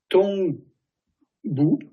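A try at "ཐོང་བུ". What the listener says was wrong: Dongpu, hein, Dongpu. Alors, si tu dis Tongpu, franchement, c'est pas très grave.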